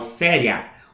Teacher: O A é mais forte. Então, o A é a vogal e o I é a semivogal. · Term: ditongo